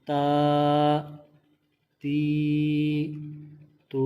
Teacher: کھڑی حرکات کو بھی ایک الف یعنی 2 حرکات کے برابر کھینچ کر لمبا کر کے پڑھیں گے